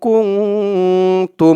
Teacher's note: 15 হরফ আমি বললাম সেই 15 হরফের যেকোনো একটা হরফ আসলেই সেখানে ইকফা অর্থাৎ নাকের ভিতরে লুকিয়ে গুন্না করে পড়তে হয়